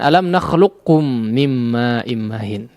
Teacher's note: Namun yang lebih masyhur adalah, ya, di sini disebut dengan idgham atau masuk kepada idgham kamil, ya, artinya seluruh sifat huruf qaf tidak terlihat lagi, ya, atau masuk kepada huruf kaf semua